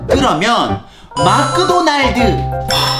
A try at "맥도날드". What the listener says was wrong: 아니, 왜 또 맥이 마크가 된 거야?